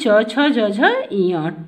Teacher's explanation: हमारी जिह्वा तालु को छूती है तो वहाँ से च छ ज झ ञ वर्ण निकलते हैं